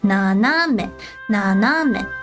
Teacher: I shouldn't say it goes up. It's more flat. 斜 め. It's more like the middle one goes up a little bit.